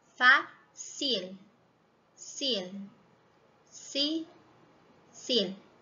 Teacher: A língua toca lá no céu da boca, mas não lá atrás. Ela vai tocar atrás dos dentes